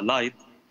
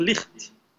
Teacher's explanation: كلمة light التي اليوم ننطقها light، كانت قبل 600 سنة تنطق لخت، الخاء كان حرفا أصيلا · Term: حرف الخاء